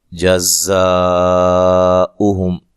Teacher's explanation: زا کو زور سے ادا کرنا ہے، سختی سے ادا کرنا ہے، زا، جزاؤہم، زا پہ جو مد ہے یہ بھی مد واجب ہے، ٹھیک ہے، الف مدہ کے بعد حمزہ اسی کلمہ میں ہے